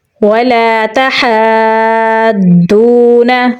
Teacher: ہا کو گلے کے درمیان والے حصے سے نکالیں گے، کھڑی زبر ہے تو لمبا پڑھیں گے۔ بڑی مد ہے اور مد کے بعد ضاد موٹا ہے اور اس کے اوپر تشدید ہے تو یہاں پر ہم ہا کو ضاد کے ساتھ ملا کر پڑھیں گے۔